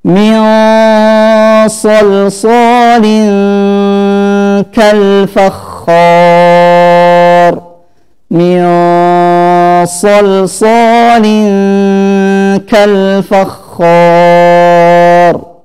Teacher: jika bertemu dengan huruf isti'la maka ikhfa'nya tebal, tafkhim